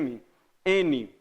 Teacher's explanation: Esse ar ele vem, ele vibra a corda e ele vai para o nariz quando eu falo M. Ó, fecho a boca, o som vai para o nariz. M, N, vai lá para o nariz.